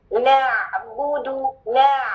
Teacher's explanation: عین کا مخرج عام الحلق، مخرج خاص اسپیشل پلیس کون سی حلق میں سے؟ وسط الحلق